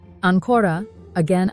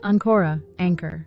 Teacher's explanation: if you stress the second syllable Anora means again if you stress the first syllable Anora means anchor let's try